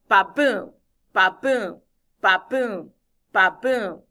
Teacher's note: the second syllable of every foot has to have the accent it has to have the stress so it'll go like ba boom ba boom ba boom ba